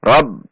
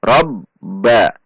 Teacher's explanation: Ada tekanan. Rob seperti tertahan sejenak karena ba memiliki sifat syiddah. Rob.